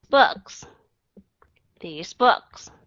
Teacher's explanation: cho chót lưỡi giữa hai hàm răng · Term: âm th